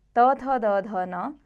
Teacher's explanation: त वर्ग त थ द ध न उच्चारण स्थान है दंत